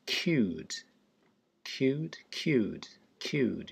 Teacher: You can see the J, it's a Y sound, cued. And the U there is kind of a rounded oo.